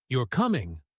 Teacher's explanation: with falling intonation, it sounds much more like a confident statement or even a light command.